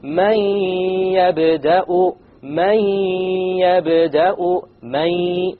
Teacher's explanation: you drop the noon sound. But you have a ghunna, and that's the nasal sound. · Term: idgham with ghunna